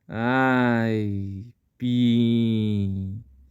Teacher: temos o som forte do a e o som muito fraco do I esse I aparece na finalização na parte decrescente do som Ai · O A fraco começa, chega no ápice sonoro do A e finaliza com o som do I. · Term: semivogal